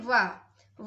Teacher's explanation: काटने पर उसके उच्चारण में कठिनाई हो सकती है जैसे व व का उच्चारण करते समय हमारे दो जो दांत है वह होटों का स्पर्श करते हैं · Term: दंत होस्ट